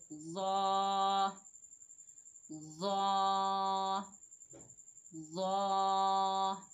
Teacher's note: ज़ा मोटा हरूफ मुस्ताला है, मोटा भी अदा करेंगे इसको और नरमी से भी अदा करेंगे। · ज़ा की अदायगी में ज़बान की नोक को ऊपर वाले दांत यानी सनाया उलिया के अंदरूनी किनारों से लगाएं। जहाँ से हमने सा ज़ाल अदा किए थे वहीं से हम ज़ा को भी अदा करेंगे।